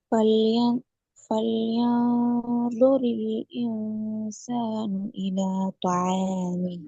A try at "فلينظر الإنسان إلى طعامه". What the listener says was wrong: இதை என்சானு மாத்தாம இன்சானு இன்சானு ஈட உச்சரிப்பு எடுக்கணும்.